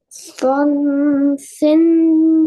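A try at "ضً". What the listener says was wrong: This is not sod. Look at the dot on top. This is sod. Zod, do, zabar. One, Zod, do, zabar, one.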